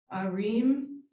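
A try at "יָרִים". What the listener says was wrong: Yeah, don't forget the yod, yarim. I didn't hear the yud, I just heard arim instead of yarim, that's all.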